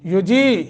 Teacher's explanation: یا ساکن ما قبل کسرہ ہے، 1 سیکنڈ کی مد کریں گے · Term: حروف مدہ